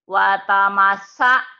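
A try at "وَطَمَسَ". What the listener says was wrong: Watamasha. Kok gak bisa ya sinnya ya? Watamasha. Watamasha. Watamasha. Watamasha. Bukan. Watamasha. Sha.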